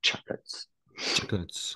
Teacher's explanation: Avec l'accentuation sur la première syllabe. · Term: accent tonique